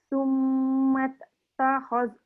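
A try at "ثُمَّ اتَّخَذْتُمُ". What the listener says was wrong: Ada bunyi mat tak boleh. Mat tak boleh.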